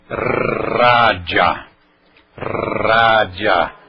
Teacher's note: língua dental a língua atrás dos dentes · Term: r consoante